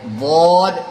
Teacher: زبان کی کروٹ لے کے نکالیں گے، زبان کو تھوڑا گھما کر کے اوپر کی طرف لگائیں گے تو نکلے گا ضاد.